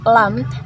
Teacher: makharijul huruf lam itu paling luar dari tengah tepi lidah sampai ke ujung tepi lidah nempel ke gusi atas